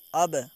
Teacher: تو اب دیکھیں با کے اوپر جزم ہے اور جب ہم با کو پڑھ رہے ہیں تو اس کی آواز واپس آ رہی ہے، ٹکر کھا کے واپس آ رہی۔ تو قلقلہ میں جتنے بھی حروف قلقلہ ہیں یعنی جب بھی ان کے اوپر جزم ہو تو اسی طریقے سے ان کی آواز واپس لوٹ کر آئے گی، ٹکر کھا کر واپس آئے گی۔